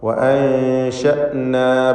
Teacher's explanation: അൻശഅന എന്ന പദത്തിലെ സാക്കിനത്തായ നൂനിനെ ഇഖ്ഫാ ഹഖീഖി നൽകി മറച്ച് മണിക്കണം. മണിക്കലിൽ തർക്കീഖാണ് വേണ്ടത്.